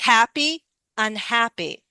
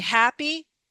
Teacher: HAP gets the stress, not the Y.